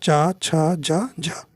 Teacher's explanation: तो चा वर्ग जो है तालव्य के अंतर्गत आता है।